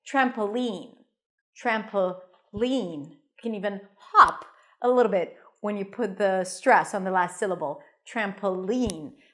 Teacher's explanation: You can also put the stress on the last syllable, trampoline. You can even hop a little bit when you put the stress on the last syllable, trampoline.